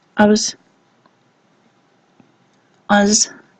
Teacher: you can't hear the second part in the first diphthong here, so instead of I, you're hearing ah, and then there probably is a schwa